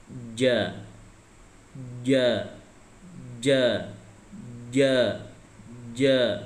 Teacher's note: Jadi kalau ini tengah, ini lidah, ya, ini lidah, tengah lidahnya ini ditempelkan di langit-langit bagian atas. Ja, ja, ja, ja, ya, dikokohkan ya.